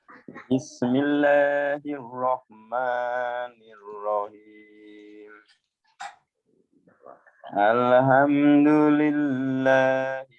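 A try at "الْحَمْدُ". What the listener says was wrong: Alham, boleh alham, nggak boleh itu kan hak kecil. Alhamdulillah. Mana boleh alham, hamada, tapi alhamdulillah, ya hamida, pakai hak kecil. Nggak ada bahasa Arab, nggak ada hamada ya.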